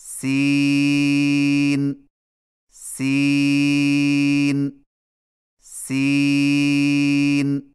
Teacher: سین کی ادائیگی میں زبان کی نوک کو ثنایا سفلی کے کناروں سے مضبوطی سے لگا کر باریک اور سیٹی جیسی آواز میں پڑھیں